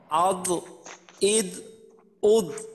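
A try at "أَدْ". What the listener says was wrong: হ্যাঁ হ্যাঁ, প্রথমটা কিন্তু একটু কলকলার মতো হয়েছিল।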